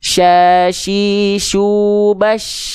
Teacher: tengah lidahnya diarahkan ke langit-langit tapi nggak sampai nempel. Kenapa? Karena ketika dia tidak nempel, dia akan dialirkan oleh sifat nafas yang namanya tafashi. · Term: huruf shin